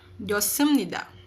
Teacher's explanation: Pero kapag daw po si H sinundan ng S, ang kanyang pronunciation ay magiging silent.